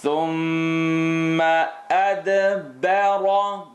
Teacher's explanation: Here we have mim shadda. I want you to hold it.